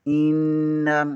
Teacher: آگے والی یاد، حمزہ زیر نون ان، نون زبر نا، ان، حمزہ زیر این، لام زبر یا لئی، نون زبر الف نا، ان الینا، حمزہ زیر ای، یا زبر الف یا، ایا، با زبر با، ہا پیش میم ہم، ایابہم، حمزہ زیر کو نون کے ساتھ ملائیں گے، نون مشدد ہے، اسے 2 بار پڑھیں گے، یہاں پر غنہ بھی لازمی ہوگا۔ ان، حمزہ کے نیچے زیر ہے، اسے بغیر کھینچیے، بغیر جھٹکا دیے پڑھیں گے۔